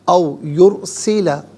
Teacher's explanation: یرسلہ میں را ساکن ما قبل یا پر پیش ہے، را ساکن کو پر کر کے پڑھیں گے